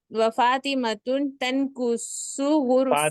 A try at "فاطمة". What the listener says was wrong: فاطمة لا، فاطمة تنوین نہیں آگی، فاطمہ، فاطمة.